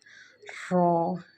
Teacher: رو کو ایک تو موٹا پڑھا جائے گا اور دوسرا جو ہے رو کو پڑھتے ہوئے وائبریشن آنی چاہیے، رو۔